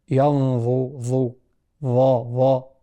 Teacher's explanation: فخم الغنة قبله وصحح مخرج الضاء بخروج جزء من اللسان، فمن طرف اللسان مع أطراف الثنايا العليا. ينظر ضا وليست من الداخل.